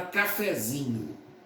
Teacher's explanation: A sílaba tônica de cafezinho é zi.